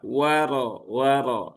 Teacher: dia di sini ya di syafatan dengan cara memonyongkan bibir terlebih dahulu ya wa ya begitu ya wa wi wah jadi bukan wa tetapi wa waro waro ya begitu ya rnya juga sama dengan yang sebelumnya tadi karena rnya ee harakatnya fathah sehingga Rnya dibaca dengan tafkhim ya atau tebal